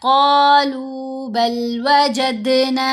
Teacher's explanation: قالوا بل، یہاں بھی یہ تو کافی دفعہ ورڈ یوز ہوا، قاف کو موٹا پڑھنا ہے لمبا کرنا ہے، لام کو بھی 2 حرکات کی مقدار لمبا کرنا ہے۔ قالوا بل وجدنا، دال کے اوپر ہم نے قلقلہ کرنا ہے